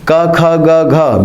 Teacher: ये शुरुआती 4 वर्ण बिना नाक के उच्चारित होते, इन्हें नीर अनुनासिक कहते हैं